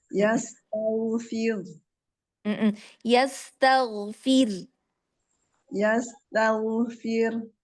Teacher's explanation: yastaghfir ya, tipis kan ro tarkiknya